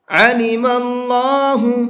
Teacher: اللہ کے لام کو منہ بھر کے پڑھیں گے، اس لیے کہ اللہ کے لام سے پہلے زبر ہے، اور اللہ کے لام سے پہلے زبر ہوتا ہے تو اس اللہ کے لام کو منہ بھر کے پڑھتے ہیں۔